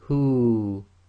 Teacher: the waw goes sakin, and effectively this turns into the long vowel dhamma waw. So it would be read as hu, too long.